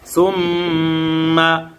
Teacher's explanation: মিমে তাসদীদ আসছে। হরকতের বামে মিমে তাসদীদ আসার কারণে গুন্নাহ করিয়া পড়িতে হয় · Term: ওয়াজিব গুন্নাহ